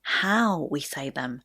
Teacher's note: you may have noticed there that I stress the word how because my main point here is the way that we're speaking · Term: sentence stress